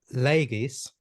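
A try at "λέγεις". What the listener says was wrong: Legis. The G has to be a little stronger, like more pronounced.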